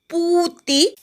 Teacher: पू दीर्घ आहे, ती ऱ्हस्व आहे, पूचा दीर्घ उच्चार करायचा, ती पटकन म्हणायचा.